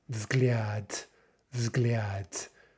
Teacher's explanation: If we count the Y sound we get with ya, we have maybe as many as five consonants there. Now keep in mind, of course, that the ya is marking the L as soft. So the word is взгляд, взгляд.